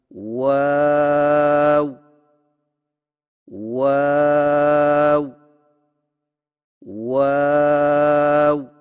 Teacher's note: ہونٹوں کو چونچ کی مانند گول کرتے ہوئے باریک آواز میں پڑھیں